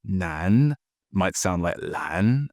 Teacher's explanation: the L and the N sounds can be swapped around